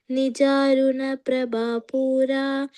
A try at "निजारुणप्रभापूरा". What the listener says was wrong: Prabhapura. Okay, this A is not long but short. Nijaruna Prabhapura Majjat Brahmanda Mandala.